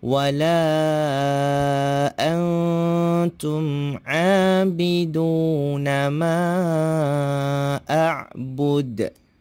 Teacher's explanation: Ma dibaca panjang sebanyak 5 harakat · Okey, perkataan wala, la itu perlu kita baca panjang sebanyak 5 harakat. Kemudian huruf nun di sana antum, kita kena dengungkan bacaan dia. Seterusnya huruf ain, kita kena sebut a, jangan kita sebut abidu.